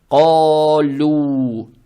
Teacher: Далее стоит буква каф, она твердая с фатхой. Фатха приобретает оттенок О. Эту же фатху тянем в 2 счета за счет алифа без огласовок. Это маттаби'и, то есть ко.